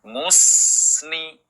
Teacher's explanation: Minal musni, mencucu. Kemudian ketika sin sukun yang sebelumnya ada harokat dhamma, maka tidak terus monyong, tetapi monyong kemudian meringis. Musni, mencucu dan meringis.